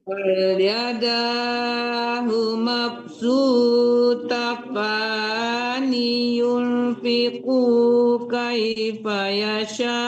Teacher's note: Sunya panjang, mabsutatan. Tebalkan ta pertama, tipiskan ta kedua.